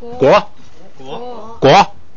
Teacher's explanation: 有前加字，所以呢变不送气，变成国